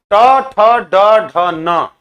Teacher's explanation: तो ऊपर का तालू में आपका जीभ जाती है। जीभ की जो आगे की जो मेन पॉइंट है वो ऊपर जाके सट रहा है। · ट से लेकर के ण तक टवर्ग जितना भी है ये मूर्धा से इसका उच्चारण होता है, इसलिए इसको मूर्धन्य वर्ण कहते हैं।